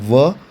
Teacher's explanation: वकारस्य दंतोष्ठम, मतलब ये व दंतोष्ठ से प्रोनाउंस होता है